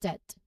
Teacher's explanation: When we say this word, the B is completely silent. So it's just debt.